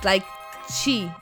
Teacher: french we pronounce basically mostly all the letters we say and the t in portuguese especially in the south and southeast of brazil we pronounce like this like chi instead of t